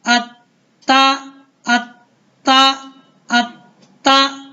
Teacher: یہ تا جو ہے حروف کلکلہ میں سے نہیں ہے اس لیے اس کو ہلانا نہیں ہے. حمزہ زبر تا ات، تا زبر تا، ات تا، ات تا، ات تا.